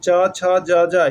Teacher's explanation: च छ ज झ इसका उच्चारण स्थान क्या हो गया तालू